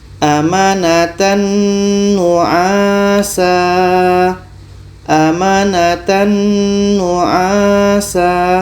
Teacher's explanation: Tanwin sempurna masuk ke nun. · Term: idgham kamil